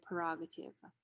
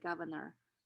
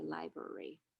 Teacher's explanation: Okay, an example would be prerogative. The first R is deleted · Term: dissimilatory deletion